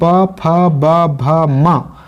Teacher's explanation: जब हम प वर्ग के 5 वर्ण का उच्चारण करते हैं प, फ, ब, भ, म, तो ये बोलने से दोस्तों ओंठ आपस में टच होते हैं